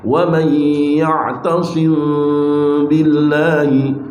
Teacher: gunnahnya ditampakkan pada saat itu seperti menampakkan gunnah sesudah mengganti nun menjadi mim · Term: ikhfa syafawi